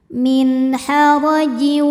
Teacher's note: Huruf ro dibunyikan secara tafkhim karena berbaris fathah. Maka dibacanya tebal.